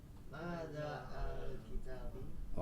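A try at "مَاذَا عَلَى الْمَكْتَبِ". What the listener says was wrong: itu bukan kitab, itu maktab ya, hati-hati ya. Madza alal maktabi, apa yang di atas meja?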